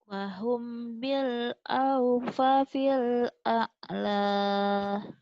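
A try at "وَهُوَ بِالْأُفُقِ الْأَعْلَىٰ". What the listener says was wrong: wahuwa bil upukil Masya Allah. Kok wahum? Wahuwa. Wahuwa bil. Wahuwa bil.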